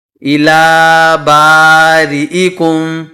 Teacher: حمزہ کو ہم یہاں پر جلدی پڑھیں گے اور جھٹکے سے پڑھیں گے۔